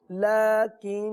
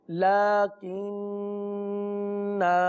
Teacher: وصل میں ہم نے الف کو نہیں پڑھا، اب وقف پڑھیں گے، اور وقف میں الف کو پڑھیں گے